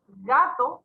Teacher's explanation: gato posee una sílaba tónica, que es la primera, ga, en donde cargamos la voz, y la segunda como átono.